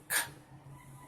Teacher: bring the back of your tongue against the back, the soft palate, the velum, you produce the velar sounds